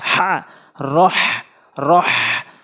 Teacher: র হা জবর রহ, সঠিকভাবে উচ্চারণ করবেন। ছোট হা এনে উচ্চারণ করা যাবে না, বড় হা এনে উচ্চারণ করতে হবে হলকের মাঝখান থেকে।